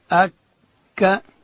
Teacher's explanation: کاف ادا کیږي د ژبې پای چې کله لوړ تالو ته ورپورته کو لږ څه د خولې و طرف ته دلته حرف کاف ادا کیږي.